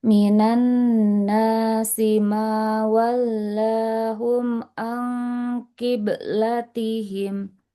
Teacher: Mawallahum au ikhfanya tebal karena nunsukannya ketemu qaf